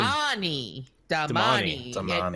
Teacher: emphasis on the middle syllable